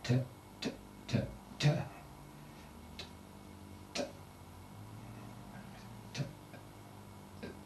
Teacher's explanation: If one takes the initial movement and position, say for T, and one can pronounce it with the schwa sound, what one might describe as an obliterated vowel. So if you say t, t, t, t, t, t, that is the one might take as one starting point.